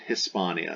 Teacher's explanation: the H in classical Latin is almost silent. Hispania, it's very slight.